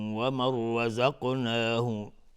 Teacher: نون ساکن بعدش را، ادغام بدون غنه و را مفخم هست، استعلاست حکمش چون فتحه داره.